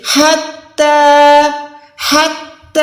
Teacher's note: یہ ہم نے حلق کے بیچ سے ادا کرنا ہے، ہڈی سے ادا کرنا ہے۔ ہاں کو تا کے ساتھ ملا کے تا کو 1 سیکنڈ لمبا کر کے کھینچیں گے۔